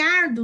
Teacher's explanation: Em árduo, nós temos um ditongo crescente também, porque o U é semivogal e o O é vogal. Então, o U tá aqui, ele vai crescer pro O.